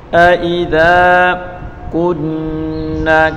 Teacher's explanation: کاف کو نون کے ساتھ ملا کر پڑھیں گے اور نون مشدد غنہ کے ساتھ پڑھیں گے